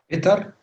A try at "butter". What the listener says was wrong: No, not bitter. It's you here. Huh. It's you, not A. Not E, sorry. But, Butter, which is زبدة يعني. Butter.